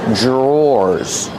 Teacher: DR makes a J sound. J. Plus the R together, jr.